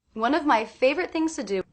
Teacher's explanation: I definitely hear one and fave as being stressed. Of my is very quick, very different than one and fave.